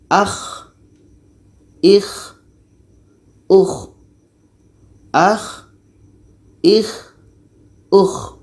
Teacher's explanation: k ini letaknya pada ujung tenggorokan